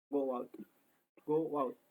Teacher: Jadi kita nggak perlu mengatakan go out, tapi kita bisa mengatakan jadi go out. Di antara go dan out ini ditambahkan suara w atau ditambahkan huruf w menjadi go out. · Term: intrusion